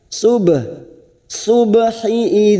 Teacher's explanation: ba sukun mati asli di tengah-tengah kalimat Qalqalah sugro kita pantulkan